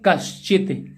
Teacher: यहां पर ये च मिला और ये प्लस से पहले विसर्ग मिला, तो उस स्थिति में विसर्ग का क्या बनेगा, विसर्ग का बन रहा श, ये तालव्य श